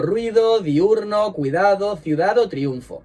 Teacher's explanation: dos vocales cerradas juntas forman un diptongo recordad que las vocales cerradas son la i y la u